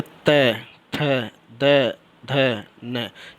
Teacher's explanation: जीभ हमारा जो है दोनों दांत से टकराता है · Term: दंत व्यंजन